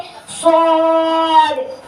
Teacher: زبان کی نوک اور دونوں دانتوں کے اندرونی کنارے سے ادا ہوتا ہے